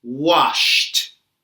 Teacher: The final sound in the verb wash is sh. Sh is a voiceless sound. So, when we say wash in the past, we say washed.